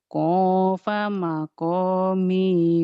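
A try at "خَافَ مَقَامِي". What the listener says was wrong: Jangan kopa, orang Jawa mah kopa. Khofa, khair. Khofa, jangan kopa. Khofa.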